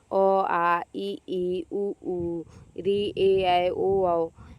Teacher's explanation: वे ध्वनियां जिनका उच्चारण करते समय हवा बिना किसी बाधा के मुख से बाहर निकल जाती है। अर्थात मुखांग कहीं भी स्पर्श नहीं करते उन्हें स्वर कहते हैं।